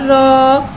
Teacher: रॉ के ऊपर खड़ा ज़बर है, खड़ा ज़बर को एक अलिफ यानी 2 हरकत के बराबर खींच के पढ़ेंगे और खड़ा ज़बर को मुँह खोल के अदा करके पढ़ेंगे। रॉ के ऊपर खड़ा ज़बर है, लिहाजा रॉ को मोटा अदा करके पढ़ेंगे